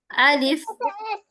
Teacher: الف منہ کے خالی حصے سے ادا ہوتا ہے